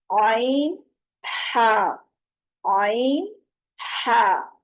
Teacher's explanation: یہ زبان کے پچھلے حلق کی طرف سے مضبوطی سے اس کو جو عین اور ہا کو ادا کرتے ہوئے حلق کے درمیان سے ادا کریں گے